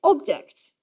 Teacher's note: If you say object, then you have a fall from the first syllable. Object, you can hear it rising to the second syllable and falling again.